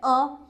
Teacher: मध्य स्वर में जिसमें जीभ का बीच वाला भाग काम करें